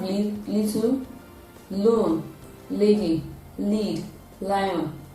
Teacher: This sound is produced with the tip of the tongue touching the alveolar ridge, and then there is a partial closure at the middle of the mouth to allow the free flow of air to come out from the two sides of the mouth. The sound is a voiced alveolar lateral sound.